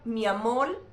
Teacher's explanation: en casos como en Puerto Rico cambian la R que está a final de sílaba por una L